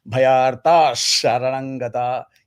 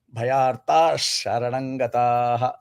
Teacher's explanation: You slightly extend that ta, and then you land on that ish. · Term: visarga sandhi